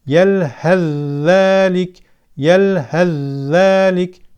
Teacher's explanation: mahreci ydi önce cezimli Fe Peltek Fe sonra harekeli Z gelirse f harfi tamamen zel harfine katılır ve z harfi şeddeli olarak okunur F harfinden hiçbir belirti kalmaz kur'an-ı Kerim'de tek bir örneği vardır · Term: idğam